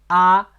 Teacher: is pronounced the more gentle and relaxed compared to English a sound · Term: a in ping in